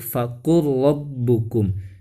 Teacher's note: Awas teman-teman dibacanya jangan fakul rabbukum ya, tapi fakul rabbukum. Jadi lam sukunnya itu dimasukkan ke huruf ro. Kenapa? Karena lam sukun dengan huruf ro, tempat keluar hurufnya atau tempat makharijul hurufnya itu berdekatan, la ro, sehingga lam sukun bisa dimasukkan ke huruf ro. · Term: idgham muttaqaribain